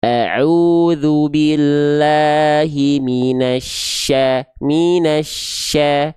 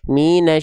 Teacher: kalimat taawud syin itu bibirnya enggak ikut-ikutan